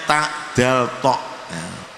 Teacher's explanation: kemudian makhroj yang ke-12 yaitu makhrajnya tak Dal tok ini keterangannya punggung ujung lidah mengenai pangkal gigi depan atas punggung itu artinya lidah bagian atas punggung ujung ya ujung lidah